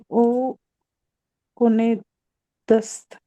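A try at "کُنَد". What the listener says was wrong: कुनद। दाल ऐड होता है इसमें ना, दाल। तो कुन में दाल ऐड है, कुनद।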